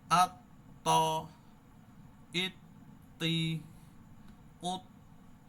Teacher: আর ত টা একটু অ স্টাইলে পড়বো একটু বেশি মোটা করে